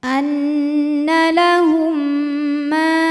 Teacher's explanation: ada Alif didahului harakat fathah maka huruf mim panjang dua harakat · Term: Mad thi'i